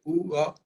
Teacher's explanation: लेकिन उ के बाद तुरंत आ बोलेंगे उ आ तो वो व की तरह उच्चारित होगा जो स्वरों के मिलने से व बना वो अंग्रेजी में डब्लू